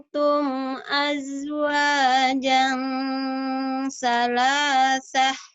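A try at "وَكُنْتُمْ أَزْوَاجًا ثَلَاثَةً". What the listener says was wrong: Iya, wakuntum jimnya agak agak pecah ya. Zai. Azwaja. keduanya baru keras. Azwaja salasa.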